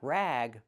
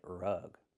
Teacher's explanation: Use a short uh sound like cup and up.